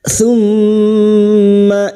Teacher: mim yang bertasdid gunna musyadadah kita dengungkan selama tiga harakat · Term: gunna musyaddada